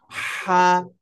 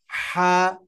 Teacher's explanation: মধ্যখান থেকে হালকা গলা চেপে উচ্চারণ করতে হবে হা, একালিপ টেনে হা, শব্দের শুরু, শব্দের মধ্যখান, শব্দের শেষের অবস্থা হলো এটা।